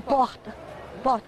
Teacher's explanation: É um R gutural. Eu digo porta. Porta. É quase um H. É um som quase de H.